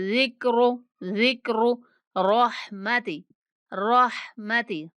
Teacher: जाल को नहायत नरमी के साथ पढ़ेंगे और रा को पुर करके पढ़ेंगे।